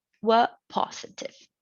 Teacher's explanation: the information it is fully complete and it is a falling tone it ends there